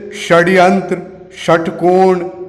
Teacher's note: जब जुबान पूरी तरह से यू टर्न होकर मुड़कर जो ध्वनि से श का निर्माण होता है उसे मूर्धन्य श कहते हैं।